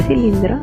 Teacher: En la palabra cilindro, ¿el acento en qué sílaba está? Correcto, el acento está en la sílaba lin